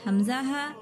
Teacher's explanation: حلق کے نیچے حصے سے حمزہ ہا